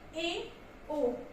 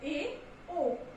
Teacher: वे स्वर जिनके उच्चारण में मुख संवृत स्वर से थोड़ा सा ज्यादा खुला रहता है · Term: असंवृत स्वर